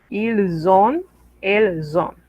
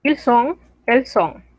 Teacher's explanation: Mismo caso, liaison. La S que no se pronunciaba, ahora se pronuncia. Pero no es una S, es una Z.